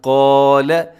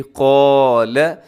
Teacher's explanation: ایک تو حرف قاف کو موٹا کرنا ہے، پھر ساتھ الف ہے وہ بھی موٹی ہو جاتی ہے، کیونکہ الف سے پہلے اگر موٹا حرف ہو تو الف بھی موٹی پڑی جاتی ہے، اگر اس سے پہلے باریک ہو تو الف بھی باریک ہو جاتا ہے۔